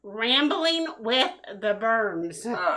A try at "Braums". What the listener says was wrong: The Brums. The Brums. Not Brahms ice cream. you said Burms. Like, you put the R after the U.